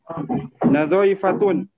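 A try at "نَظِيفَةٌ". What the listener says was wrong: Darah itu salah harokat itu. Dha-nya di kasrah. Nadhifatun.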